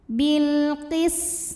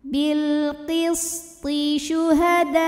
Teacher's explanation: di sini ada desisnya ya, karena punya sifat namanya shofir.